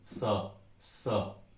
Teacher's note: ये आगे रहेगी जीभ, दांत के कोने पे लगेगी